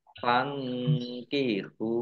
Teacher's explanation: nun sukun bertemu dengan huruf kaf bacaan ikhfa dibaca samar-samar